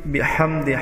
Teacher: وَرَأَيْتَ النَّاسَ يَدْخُلُونَ فِي دِينِ اللَّهِ أَفْوَاجًا فَسَبِّحْ سین میں مثل سیٹی کی آواز، فَسَبِّحْ میں با مشددہ کو سختی سے پڑھیں گے. بِحْ ہا وسط حلق سے ادا کریں گے.